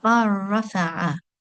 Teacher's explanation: So we make a complete assimilation and the letter lam is not pronounced. And one will go straight from the letter ba in our example here to the fatha on the letter ra.